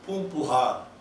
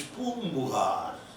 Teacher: In Tamil, after ma, pa will not be said. It will be ba.